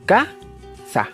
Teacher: Y habíamos dicho que ka era la sílaba acentuada. Por lo tanto, ka es la sílaba tónica y sa es la sílaba átona.